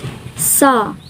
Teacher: voiceless alveolar fricative